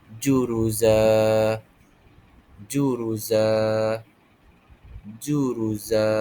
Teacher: Cara bacaannya kita anggap satu baris sahaja dan kita panjangkan dua harakat. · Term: mad iwal